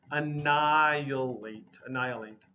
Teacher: The H sound is really missing